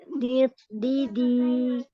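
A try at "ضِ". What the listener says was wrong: Nah, di itu tadi sudah dapat, jangan ke dal. Nah, ini tiga huruf ini huruf bod semua ya.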